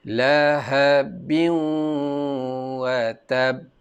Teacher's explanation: Itu bacaan idgham. Dia masuk terus ke waw.